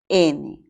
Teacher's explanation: la n es un sonido nasal según el punto de articulación es alveolar y según las cuerdas vocales es sonoro